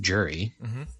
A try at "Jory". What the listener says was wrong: You always pronounce Jory's name Jury, like a jury for court? Yeah, it's Jory, Jory, but as in like Marjorie.